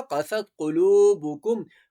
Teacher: قاف کو موٹا پڑھا جائے گا اور یہ کاف باریک پڑھا جائے گا